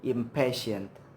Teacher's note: The bilabial M is followed by P, which is also bilabial, so the sound is impatient. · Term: assimilation to bilabial place